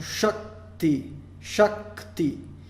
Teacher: A gente vai enfatizar daí esse encontro consonantal. A gente não vai abrir ou estender o A. A gente vai simplesmente enfatizar o encontro consonantal e assim nós vamos ter uma sílaba prolongada.